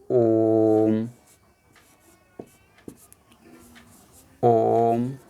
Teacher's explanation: अब इसमें प्लुत भी होता है तीसरा, प्लुत में क्या होता है कि इसमें हम देर तक नाक से आवाज़ निकालते हैं, देर तक खींचते हुए। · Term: प्लुत स्वर